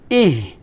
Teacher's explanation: এটা কিন্তু হামসে হরফ হালকা বাতাস বের হবে খলকের শুরু থেকে পাতলা বাতাস বের হবে